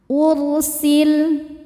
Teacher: sebelum ro sukun ada baris dhammah maka bacanya tebal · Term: tafhim